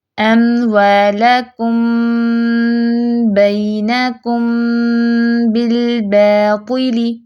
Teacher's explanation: دونوں ہونٹوں کے گیلے حصے کو سختی سے ملا کر با ادا کیا جائے گا